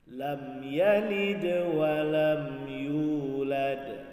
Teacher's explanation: yalid, ada dal yang berharkat sukun, maka itu adalah qalqalah sughra